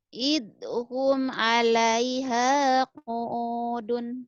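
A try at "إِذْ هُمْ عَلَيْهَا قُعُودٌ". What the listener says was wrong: jangan Zalnya kayak kayak ngomong sa.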